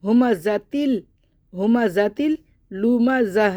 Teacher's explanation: تا کو لام سے ملا دیں گے تو تل ہو جائے گا ، ہما ذاتل لوما زہ، لام کو ہم نے دوبارہ پڑھا